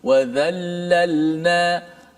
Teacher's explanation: Maka bila kita sebut za, pastikan za itu betul-betul sifatnya nipis.